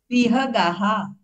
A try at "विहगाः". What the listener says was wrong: सही है,